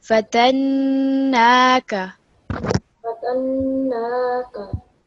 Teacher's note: we've got vertical fatha on this noon, so it's going to be 2 seconds